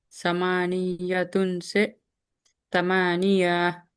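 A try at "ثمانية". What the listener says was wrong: नहीं, खींचना नहीं है ना उसको। समानिया, यह, ये हा की आवाज आना। नहीं, मैं बोल रहा हूं तो आ रही क्या? देखिए, आप खाली गौर करिए। समानिया। मैं बोला तो आई आवाज हा की।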